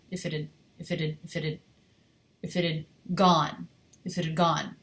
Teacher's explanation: So another thing that I'm doing that you could probably do more of is gone is much longer than if it had. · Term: rhythmic contrast